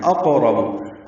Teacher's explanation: وَنَحْنُ أَقْرَبُ إِلَيْهِ مِنْكُمْ وَلَكِنْ لَا تُبْصِرُونَ، واو ہونٹوں کی نا تمام گلائی سے ادا ہوتی ہے، ہا ساکن پہ ہمس ہے، وَنَحْنُ وسط حلق سے ادا ہوگا، نون کو معروف اور جلدی پڑھنا ہے۔ اقرب حمزہ اقصی حلق سے ادا کرنا ہے بالجہر، قاف پر پڑھیں گے حروف مستعلیہ میں سے، اور اس پہ قلقلہ ہے، را پر پڑھیں گے، با کو جلدی ادا کریں گے۔